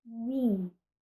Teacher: o arredondamento da semivogal, ou semiconsoante, permanece diante de I